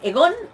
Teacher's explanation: El pronombre de primera persona es egon, observamos esa nasal final